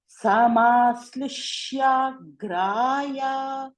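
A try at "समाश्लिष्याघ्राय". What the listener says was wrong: Again, samashlishya. That samashlishya. Here, this particular sha, it is not sakara. It is not samashli. It is samashlishyagraya.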